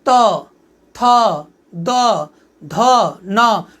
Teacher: जीभ हमारे दांत पे जाके टच कर रहा है।